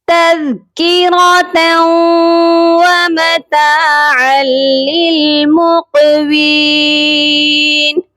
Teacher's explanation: عین کو لام مشدد کے ساتھ جب ہم ملائیں گے تو سختی سے ملائیں گے